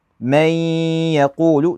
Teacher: So I'd say من يقول. So notice the noon is basically gone. I just merge it right into the ya.